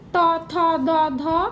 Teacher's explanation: তারপরে দন্তবর্ণ এটা আরো ইজি তথ দধ দন্তন্য সবগুলোতেই জীবের ডগাটা দাঁতে ঠেকছে · সবগুলোতেই জিভের ডগাটা দাঁতে ঠেকছে, তাই দন্তবর্ণ।